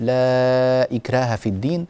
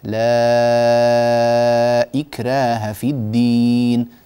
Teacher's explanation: ك مددتها اربع حركات فقط مع ان ا الازرق عن ورش يمد هذه الالفات المدود المنفصله والمتصله ست حركات فطول مدك اخي الكريم قليلا وقول لا اكراه في الدين هكذا